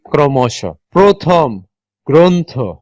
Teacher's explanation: শব্দের প্রথমে র ফলা থাকলে অধ্বনির উচ্চারণ ও ধ্বনির মত হয় বা সংগৃত হয় অর উচ্চারণ যখন অর মতো না হয়ে ওর মত হবে সেই